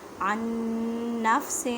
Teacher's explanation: عن نفس، اب دیکھیں نون ساکن ہے، نون ساکن کے بعد نون ہے، ادغام مع غنہ کریں، مینس کے غنہ کرنا ہے